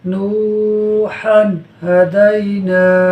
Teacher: ہا پر دو زبر کی تنوین کے بعد ہا حروف حلقی میں سے ہے، لہٰذا اظہار ہوگا، یعنی تنوین میں غنہ نہیں ہوگا